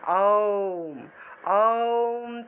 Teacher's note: ওমের উচ্চারণের নিয়ম হলো মুখটা একদম বড় থেকে ছোট হবে। তা সেই ক্ষেত্রে আমরা মুখটা একদম বড় যদি করি তাহলে আ উচ্চারণটা আসে।